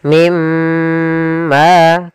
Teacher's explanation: cara membacanya masukkan nunnya ke huruf mim dan kemudian ditahan dengan gunah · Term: idgham bi gunnah